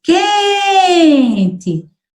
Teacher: quando a gente diz quente, a sílaba tônica é a penúltima. Então, ó, quente é a sílaba tônica.